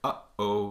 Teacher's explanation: right in between those two sort of syllables you get a stop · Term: glottal stop